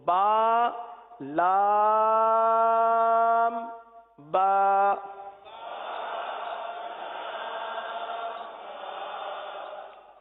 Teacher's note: لام کی میم جو ہے وہ ہونٹوں کے خشک حصے سے ادا ہوتی ہے، وہ حصہ جو باہر رہتا ہے. با دونوں ہونٹوں کے تر حصے سے ادا ہوتا ہے